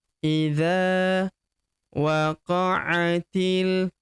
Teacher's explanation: huruf ti langsung lompat masuk ke huruf lam yang berharakat sukun ini. Alifnya tidak dibaca atau dianggap tidak ada. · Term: hamzah wasal, hamzah wasol